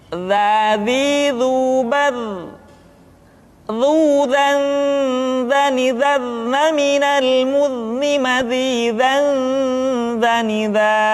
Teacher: Diucapkan dengan menyentuhkan ujung lidah dengan dinding dua gigi seri bagian atas seperti kita mengucapkan huruf tha. Ujung lidah boleh ditampakkan ataupun tidak nampak. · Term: huruf dha